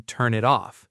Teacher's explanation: the final consonant jumps onto the next word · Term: linking consonant sounds